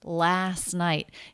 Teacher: even though last is one of the stressed words it does have a dropped sound there is no t the reason is because it's part of an ending st cluster · There is no T. The reason is because it's part of an ending ST cluster. The next word begins with a consonant.